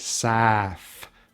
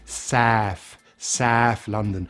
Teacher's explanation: South, with an F sound at the end. Yeah, even though it ends with a TH, we say South London. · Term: TH fronting